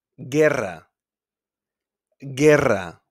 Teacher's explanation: in GUE, like in hamburguesa, guerra, guerra, we don't pronounce the U